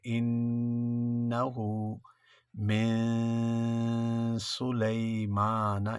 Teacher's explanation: اخفا ہے، ناک میں آواز چھپ جائے گی